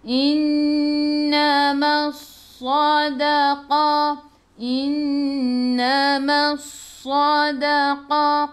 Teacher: Alif lam syamsiyah, lam tak ada sukun selepasnya ada sabdu, terus tekan ke dalam sad. Ingat sad, sa, si, su tebal dan sifat hurufnya safir kena bunyikan.